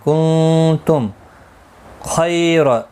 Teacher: میم ساکن کے بعد خا آیا ہے، اظہار شفوی ہوگا، یہاں پر میم کے اوپر غنہ نہیں ہوگا، میم ساکن کو ظاہر کر کے پڑھیں گے. کنتم خیر، خی یا لین ہے، تھوڑا نرمی کے ساتھ کھینچ کر ادا کریں گے. خا مستعلیہ ہے، پر پڑھا جائے گا، را زبر کی وجہ سے پر پڑھا جائے گا.